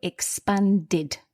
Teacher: the ed becomes id